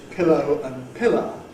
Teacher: the minimal pair in Standard English, ‘pillow’ / ˈpɪləʊ / and ‘pillar’ / ˈpɪlə /, both pronounced the same in Broad Cockney